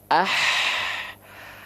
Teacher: H kecil ini dilafalkan dari tengah tenggorokan kita · istilahnya apa tadi wastul halqi nafasnya gimana nafasnya nafasnya berbisik ya Tengah tenggorokan dengan nafas yang karakteristiknya berbisik